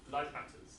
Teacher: the t is assimilated to a p